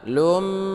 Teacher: berdengung dua harokat, ini adalah idgham bighunnah ya.